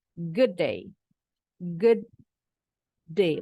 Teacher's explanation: ini lidah kita jangan diturunin ya kalau lidahnya diturunin berarti bunyi konsonannya tuntas bukan diop bukan diberhentikan